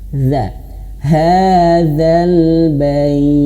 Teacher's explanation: ujung lidah menyentuh ujung gigi seri atas